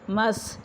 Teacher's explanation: سین کے اوپر سیٹی کی آواز آئے گی، اس کی آواز کو جو ہے سیٹی اور باریک ادا کیا جائے گا کیونکہ یہ حروف صفیریہ میں سے ہے۔